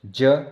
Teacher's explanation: ज अल्प प्राण जो कि सघोष में आता है